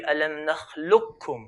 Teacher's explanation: the rule of idgham, so merge the qaf onto the kaf